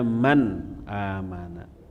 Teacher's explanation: Maka nun itu harus dibaca jelas, tidak boleh dengung. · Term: idhar